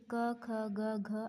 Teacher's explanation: याचे उच्चारण स्थान कंठ आहे